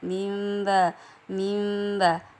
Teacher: Jadi ketika mim sukun bertemu dengan huruf ba, maka dibacanya samar. Jadi di antara huruf mim dengan ba, mim ba. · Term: ikhfa syafawi